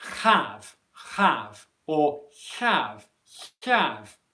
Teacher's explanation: common for people to say have have or have have where there's a friction noise in the in the throat or the back of the mouth before you make the h sound